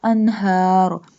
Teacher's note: ha pronounced from the bottom part of throat